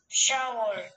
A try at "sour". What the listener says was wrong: 오케이, shower가 아니고 sour. shower라고 안 들립니다. sour라고 그러죠.